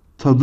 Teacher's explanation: T sesinin yumuşayarak D'ye dönüştüğü görülmektedir. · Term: ünsüz yumuşaması